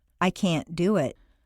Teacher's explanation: Make the negative can't sound very short and stress both can't and the verb.